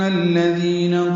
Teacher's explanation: ان کے نون کو زبر کو الذین کے نام سے ملا دیں گے، دال نرمی سے پڑھیں گے، ذی یا مدہ ہے، دو حرکات لمبا کریں گے